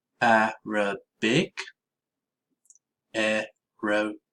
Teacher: Now, I had a class who found problems distinguishing between the words Arabic and aerobic. The key to the difference between these words is the stressed syllable and the position of the schwa sound.